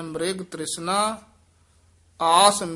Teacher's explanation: ਮ੍ਰਿਗ ਬੋਲਣਾ ਮਿਰਗ ਨਹੀਂ ਕਹਿਣਾ